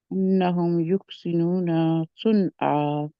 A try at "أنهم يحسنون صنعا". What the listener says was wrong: مجھے تھوڑا سا نا آپ کی یحسنون خا کی آواز، ہا کی بجائے خا کی طرف آپ مخرج کی طرف جا رہے ہیں، اس کا خیال رکھیں.